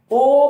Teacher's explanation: ओ बोलोगे तो ओंठों को घुमाना पड़ेगा, औ बोलोगे उसमें भी ओंठों को घुमाना पड़ेगा, क्योंकि ये एक ऐसी क्रिया इनको बिना घुमाए, ओंठों का बिना सहारा लिए ये स्वर नहीं बोले जा सकते हैं। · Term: कंठोष्ठ